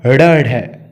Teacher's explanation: इनका उच्चारण जीभ की नोक को झटके से नीचे गिरने से होता है। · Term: उत्क्षिप्त